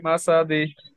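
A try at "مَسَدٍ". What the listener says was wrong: তানবিনের উচ্চারণ কিন্তু দন্তান্য আসে লাস্টে দিন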